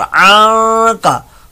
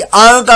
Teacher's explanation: खाली आ का कहा तो आइन की जगह हमजा लगाना कहलाएगा